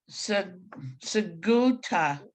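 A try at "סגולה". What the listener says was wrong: except that's a L sound. Sigula.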